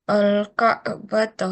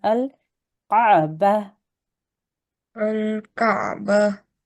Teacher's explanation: Ta marbuta, if you have to make a stop, it always becomes a ha sakin.